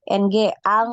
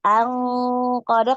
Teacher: ini ada Nun ketemu qof ini coba dibacanya ng ya Ng Ang gitu ya Ang Q kemudian ditahan Ya ditahan